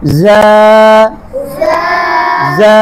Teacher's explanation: জিহ্বার আগাটা সামনের নিচে দুধের আগার দিকে লাগবে।